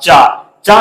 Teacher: जब आप बोलेंगे तो आपकी जो जिब्बा है आपकी तालू को स्पर्श करेगी जब तक आपकी तालू को आपकी जिब्बा स्पर्श नहीं करेगी तब